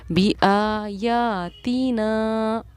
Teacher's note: آ یا اور نا پر ایک ہی مقدار میں میری آواز کھینچی ہے، جبکہ تی پر بالکل نہیں کھینچی